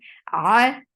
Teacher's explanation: Ar ain from your throat. The sound is short, but the ain should be from your throat.